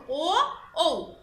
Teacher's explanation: ও ঠোঁটটা গোলাকৃত হয়ে যায়, কারণে এটা কণ্ঠ এবং ওষ্ঠ দুটোরই ব্যবহার হচ্ছে